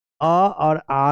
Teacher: अ और आ को हम लोग कंठ से बोलते हैं